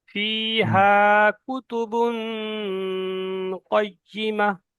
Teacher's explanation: তানবিনের পরে কফ হরফে ইকফার মধ্যে এসছে, তাই এখানে গুণনা হবে